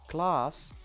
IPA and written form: klɑːs (class)